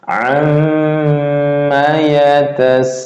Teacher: Ini mimnya masuknya ditahan 2 harokat, dilepasnya 1 harokat langsung ke huruf ya